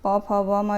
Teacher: प, फ, ब, म जो है ओष्ठ व्यंजन कहलाते हैं। इनके उच्चारण में जो है आप लोगों ने देखा होगा होठ जो है परस्पर मिलते रहते हैं